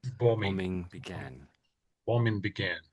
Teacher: I think the second B is basically, I would say, silent, and it's always pretty much in every version of the word it comes out as silent really.